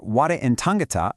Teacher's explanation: For ware and tangata, there are no long syllables or special vowel clusters, so they follow Rule 3, stress on the first syllable